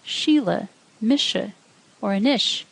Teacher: Slender S sounds like sh, as in the Irish words Sheila, Misha, or Anish